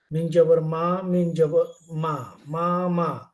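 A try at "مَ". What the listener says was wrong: একটু একটু মনে হচ্ছে টেনে করার মতো লাগছে আমি জানিনা টেনে হওয়ার মতো করা যাবে না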